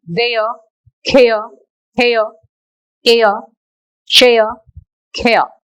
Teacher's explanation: A, as in there, care, hair, air, share, care. Don't pronounce that r sound at the ending of all these words. That is r is silent.